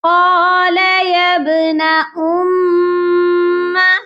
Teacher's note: میم مشدد پر ہم نے غنہ کرنا ہے. حمزہ جب بھی کسی حرف کے اوپر آتا ہے حمزہ کو پڑھتے ہیں، واو کو ہم نے نہیں پڑھنا، با پر قلقلہ کریں گے.